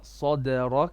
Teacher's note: Okay, so your ra is not there, and make your sa more heavy. Sa, the dal is flat with qalqala.